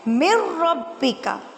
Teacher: را کے ساتھ ملانا ہے تو بغیر غنہ کے ملائیں گے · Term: بلا غنہ